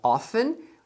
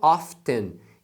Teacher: essa palavra often, ela pode ser pronunciada often, sem pronunciar o T, e algumas pessoas falam often. Então as duas pronúncias são corretas, tá?